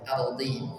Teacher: huruf dhad kasrah di sini tebal